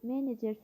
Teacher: Menecer sözündə vurğu əvvəldədir.